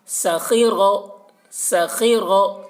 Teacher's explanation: ٹھیک ہے، جلدی پڑھنا ہے زبر زیر کو، اور زیر کو معروف پڑھنا ہے، اس کا خیال رکھنا ہے. سخیرہ، یہاں پر خا کو پور پڑھ رہے ہیں اور را کو بھی پور پڑھ رہے ہیں